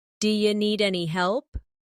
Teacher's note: do you sounds like diya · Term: d'ya